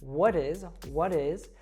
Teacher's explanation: we have the american t there happening because the t falls between wha and is so it becomes what is what is and then the s